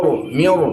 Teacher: Setiap ro sukun didahulukan kasrah dihadapi dengan huruf istilla dalam hal ini huruf shad. Maka ro itu dihukumi dengan tabhim.